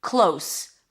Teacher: Long O as in go, and then an S